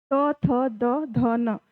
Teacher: तो आपकी जो जीभ है वो दांत को टच करती है, इसलिए हम इसे दंत व्यंजन बोलते हैं।